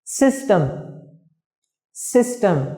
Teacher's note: trọng âm của từ này rơi vào âm tiết thứ nhất